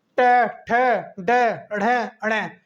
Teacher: आप बोलने का देखिए कि टे, ठे, डे, ढे, अणे, आप बोलते समय जीभ जो है हमारी वो ऊपर के ऊपर मुड़ जाती है। ठीक है, तो इसलिए इसको हम कहते हैं मूर्धन्य।